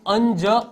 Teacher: નાકમાંથી હવા નીકળે અને આ વ્યંજનો બોલાય તો આ બધા અનુનાસિક વ્યંજનો છે